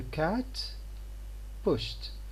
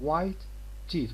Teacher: when we have got a stop followed by another stop in here, the first one is unexploded. The air does not go through the mouth. It does not take the form of explosion here.